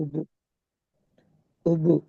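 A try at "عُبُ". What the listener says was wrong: ஆயின் வருது இல்ல, ஓபு. நான் ஆயின தொண்டையால வரணும். ஓ, தொண்டையால. அந்த தொண்டையால வரணும்.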